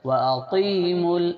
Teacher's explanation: قاف کی آواز موٹی ہونا ہے